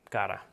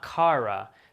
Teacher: the double t is basically this single r sound really quick